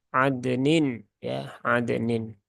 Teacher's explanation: di sini huruf dal ini memang dia punya kolkolah